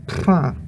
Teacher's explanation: This only has the voiceless bilabial trill pra, and pra only occurs in expressive words or before an u.